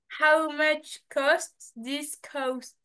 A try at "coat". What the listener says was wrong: Alors, euh, on dit pas cast pour le manteau.